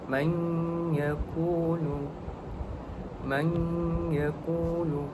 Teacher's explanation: Hukum tajuk yang terdapat pada ayat ini ialah idgham maal ghunnah iaitu apabila nun mati bertemu dengan ya. Maka hukum bacaan di sana ialah dengung dua harakat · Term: idgham ma'al gunnah